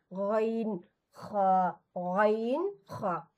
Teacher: গইন আর খা এগুলো ঠিক কি যে পানি দিয়ে গড়গড়া করার মতো করে আওয়াজ হবে। এই দুইটা হরফ উচ্চারণ করার সময় এভাবে গইন খা, গইন খা।